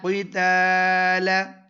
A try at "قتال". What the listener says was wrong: تا نا موٹی پڑھو قتال